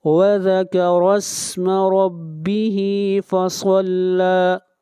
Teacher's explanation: را کو موٹا پڑھیں گے، را کے اوپر زبر ہے اور ہا کو کھینچ کر پڑھیں گے ایک الف کے برابر